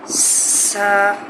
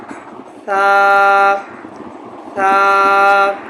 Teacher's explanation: اس کا مخرج ذہن میں رکھ لیں کہ زبان کی نوک یہ ثنایا علیہ، یہ سامنے والے جو دو دانت ہیں ان کو کہتے ہیں ثنایا علیہ، اس کے بالکل سرے سے لگے۔